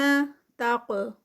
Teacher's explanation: قاف ہیوی اور ساتھ میں کلکلا